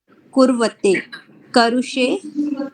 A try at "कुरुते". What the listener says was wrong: करुते करुते कुर्वाते कुरुते कुर्वाते कु है, हाँ उसमें उ की मात्रा नहीं लगी। कुरुते,